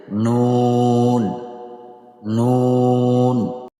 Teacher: জিহ্বার আগা তার বরাবর উপরের তালুর সঙ্গে লাগিয়ে নুন, নুন।